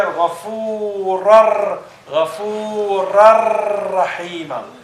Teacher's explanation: So the nun disappears and the nun is combined with the next ra.